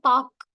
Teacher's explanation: ஒரு மாத்திரைக்கு பதிலாக அரை மாத்திரை அளவை ஒலிக்கிறது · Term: குற்றியல் உகரம்